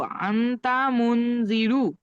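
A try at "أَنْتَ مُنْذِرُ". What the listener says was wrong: আহ হয়নি, গুণনা করেননি একটাও আপনি।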